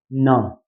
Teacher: जिब्रो ठ्याक्कै दाँतको पछाडि गिजाबाट चाहिँ आउनु पर्यो